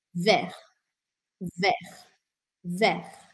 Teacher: Vert. Com esse R arranhadinho no final e sem falar o T.